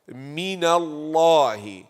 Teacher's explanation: The name of Allah will be full mouth because ma qabal is maftuh.